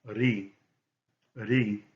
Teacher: It's a soft roll, not a hard roll as in the double R in Spanish.